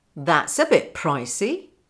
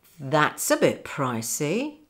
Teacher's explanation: And the stress is on that and price.